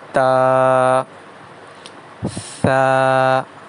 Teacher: تا اور ثا کی ادائیگی میں بھی الف کی آواز آئے گی، اسی وجہ سے انہیں ایک الف کے برابر کھینچ کے پڑھا جاتا ہے